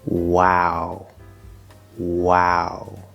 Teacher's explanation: we're starting with a w sound which is very deep and then we're going to go through the diphthong ow and at the end of that sound notice that it's not quite as deep